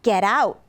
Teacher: yeah very nice so that sounds almost like get out now the T in English between two vowels will often change to a D sound so in this case it would probably change to a d